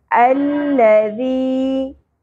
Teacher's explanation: ज़ाल की अदायगी में शिद्दत नहीं होगी, सीटी नहीं होगी, ठीक है, नरमी से अदा करना है। अल्लज़ी, या साकिन हरफ़े मद्दा है, एक अलिफ के बराबर खींचेंगे